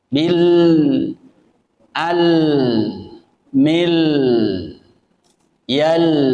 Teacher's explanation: kalau baca huruf lam, ketika sukun tetap harus ada aliran suaranya.